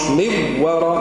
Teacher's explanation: الإدغام مع الغنة مش إدغام فقط